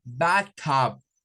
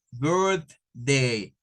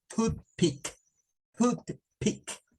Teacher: se usa el sonido TH sin vibración, o comienza en TH, y por la misma razón se usa el TH sin vibración. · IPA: /θ/